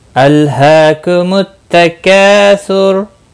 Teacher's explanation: अल लम साकिन को हिलाना नहीं, हा के ऊपर खड़ी ज़बर है, एक अलिफ के बराबर खींच कर पढ़ेंगे।